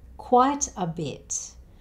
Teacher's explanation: The A here changes to the schwa sound